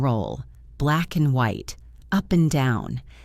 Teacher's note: It is a very small word, but we almost never say and. We usually just say n.